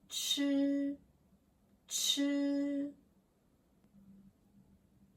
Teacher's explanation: is like English ch in chair but with more air